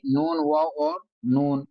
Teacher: इस व को जो है नाक में चढ़ाने से बचाना है। मैंने आपसे कहा था कि नाक में चढ़ाने से अलिफ मदद या मद्दा और वाऊ मद्दा इन तीन हरूफों को नाक में चढ़ाने से बचाना है।